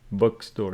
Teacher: stress on the first syllable because it is a compound noun